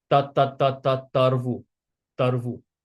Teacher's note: This capital T is an interdental T, so we bite our tongue.